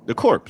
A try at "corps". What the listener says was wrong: There's no P. The P is silent, babe. The P is silent.